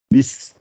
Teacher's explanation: le sin, le zay et le sad. Toutes ces trois lettres-là, elles doivent siffler. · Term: sifflement